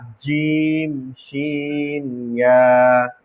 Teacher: জিহ্বার মধ্যখান তার বরাবর উপরে তালুর সঙ্গে লাগাইয়া